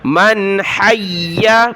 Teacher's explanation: یا کو سخت کیا تشدید کی وجہ سے